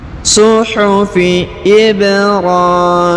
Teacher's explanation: huruf ba berharokat sukun, maka kita pantulkan atau kita qalqalahkan. Kemudian huruf ra dipanjangkan 2 harokat karena di atasnya terdapat tanda alif kecil ya.